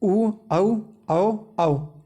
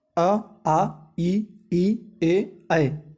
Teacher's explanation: ये वृत्ताकार वे होते हैं जिनमें होठ गोल हो जाता है, अवृत्ताकार होते हैं जिनमें गोल ना होकर ऊपर नीचे फैल जाते हैं, उन्हें कहते हैं अवृत्ताकार।